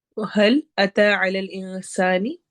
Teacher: حل میں ہا کی آواز ہے، یہ حلق کے سب سے نچلے، تھروٹ کا سب سے نچلا حصہ جو ہوتا ہے وہاں سے نکلتا ہے